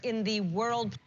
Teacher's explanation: she's stressing emphasizing the um the article in the world so she's using the strong form not the weak form for the article the